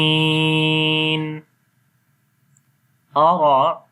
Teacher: then after that Ra read in heavy sound due to Fatha sign on the Ra